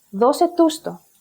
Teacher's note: For example, δώσε τους το, give it to them. Here, the stress of the last pronoun, which is to, moves to the previous syllable, which is the pronoun tu. The logic is that the basic stress of the word δώσε is more than 3 syllables away from the end of this group, that is closely pronounced as if it's one word, breaking the golden rule I mentioned at the beginning. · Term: enclisis